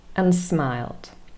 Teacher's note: The connector and also loses its final consonant d, n, and smiled, and smiled. In fact, here we also have vowel reduction because the vowel sound a is reduced to the schwa sound e. And becomes and smiled.